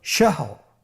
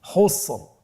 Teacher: তাহলে র শেষের অক্ষরটি সাকিন, এর আগের হরফটি হা, এটাও সাকিন এবং এর পূর্বের হরফটির উপর জবর রয়েছে। তাহলে আমরা শেষের র অক্ষরটিকে মোটা করে পড়ব।